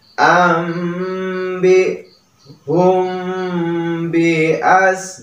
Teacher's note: Mim mati bertemu dengan ba. Nah, ini merupakan ikhfa syafawi ya. Jadi dibacanya sedikit mendengung ya.